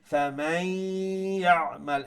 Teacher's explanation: ফামান এখানে ইদগাম গুন্নার সহিত